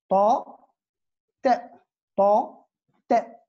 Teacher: Après, on a l'alvéole dental, asnani lathawi, le ta. C'est une occlusive sourde et surtout emphatique. Donc, c'est l'emphatique du ta.